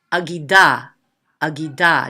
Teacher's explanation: Notice how quick the ah part is.